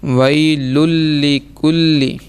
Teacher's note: تنوین کے بعد لام اور اگلے میں بھی لام، یعنی گنہ کے بغیر ہم ادغام کریں گے